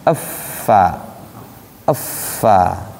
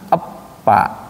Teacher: Kenapa? Karena huruf fa itu dia memiliki sifat nanti mengalir. Pa enggak mengalir.